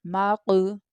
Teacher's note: हमें वहाँ पर कलकला करना है, यानी बाउंसिंग साउंड के साथ पढ़ना है